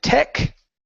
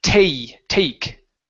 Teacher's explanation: So here you said tech, okay, using an ek sound instead of aik. So we need a diphthong here.